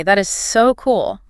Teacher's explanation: You need to put strong physical energy on the word so. You push a lot of air out on that word to show your excitement.